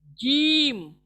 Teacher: जबान का बीच का हिस्सा जो है वो बिल मुकाबिल ऊपर तालू को लगता है, उसको लगने से अदा होता है।